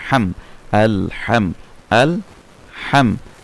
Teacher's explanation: হা হলকের মাঝখান থেকে মিম হচ্ছে দুই ঠোঁট থেকে